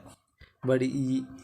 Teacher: अग्रस्वर यानी जो जिन स्वरों का उच्चारण आप जीभ के आगे वाले भाग से करते हो और जीभ का आगे वाला भाग उठता है, ठीक है। जैसे ई बोलो तो आपका जीभ का आगे वाला भाग उठेगा